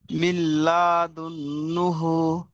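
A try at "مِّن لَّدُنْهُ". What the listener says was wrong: লা টান হবে না, মিল্লাদুনহু। নুন সাকিনের পরে ইদগামে ইয়ার মালুনের লাম এসেছে।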